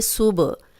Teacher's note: با پہ جزم آ گئی ہے اور با یہ قلقلہ ہے، ہلا کے پڑھیں گے